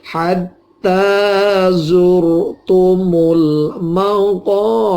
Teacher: Maqo ini fathah ketemu alif, ini dipanjangkan sepanjang 2 harokat. Bir ini ro-nya dimatikan karena waqaf, tapi sebelumnya harokat kasroh, ini dibaca takhfif atau tarkik tipis ya, dibaca tipis